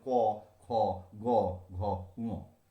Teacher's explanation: জিহ্বা মূলের পিছনটা স্ফীত হয়ে ফুলে গিয়ে কণ্ঠ স্পর্শ করে শ্বাসবায়ু নির্গমনের পথে বাধা সৃষ্টি করে যে ব্যঞ্জন উচ্চারিত হচ্ছে, বাধা পেয়ে যে ব্যঞ্জন উচ্চারিত হচ্ছে তাকে বলা হচ্ছে কণ্ঠ ব্যঞ্জন।